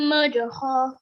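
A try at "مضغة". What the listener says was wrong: Okay, remember this letter ghain. So make the gha sound, okay? Okay, so right now I'm just hearing you say a bit like a kha sound, okay? Remember, don't confuse that ghain and the kha sound, okay? There's different sounds.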